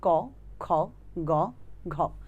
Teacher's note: এটা একদম জীভের পেছনের অংশ ভেতর থেকে আসে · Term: কন্ঠ ব্যঞ্জন